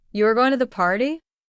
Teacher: His voice needed to go up at the end. That rising tone shows curiosity, surprise, or a request for confirmation.